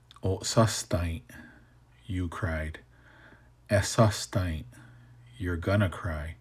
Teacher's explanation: you notice they all end in a glottal stop.